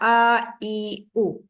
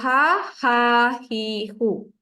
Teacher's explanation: pangkal kerongkong tempat terhasilnya sebutan huruf hamzah dan juga huruf ha